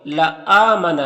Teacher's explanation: یہاں پر حمزہ میں کھڑا زبر ہے، یہ الف مدہ کی طرح ہوتا ہے تو اسے 1 الف کے برابر کھینچیں گے